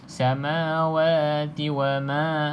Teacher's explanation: mana-mana alif kecil ke besar ke tak kisah, tuan-tuan dan puan pastikan panjang 2 harakat